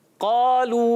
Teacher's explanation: वो भी मोटा हो जाता है, पुर हो जाता है। जी हाँ, क़ालू को क़ा पुर रखना है, अलिफ भी पुर रखना है।